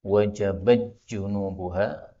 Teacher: ini tak ketemu dengan jim, ini boleh idgham menjadi wajabat junubuha, taknya diubah menjadi jim ya, atau masuk pada jim.